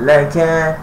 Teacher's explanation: Dihembuskan ataupun dihamaskan di atas huruf kaf.